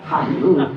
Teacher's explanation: Jadi huruf ha makhorijul hurufnya keluarnya memang di tenggorokan, di kerongkongan. Ha, tapi ngedorongnya dari perut.